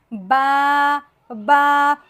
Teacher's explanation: با با با کا مخرج بھی انتہائی آسان ہے، یہ ہونٹوں سے ادا ہونے والا حرف ہے۔ با با دونوں ہونٹوں کو ملائیں گے تو با نہایت ہی آسانی سے ادا ہو جائے گا